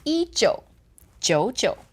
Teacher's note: 19 belongs kind of as one unit together, and then I'm left with two third tones again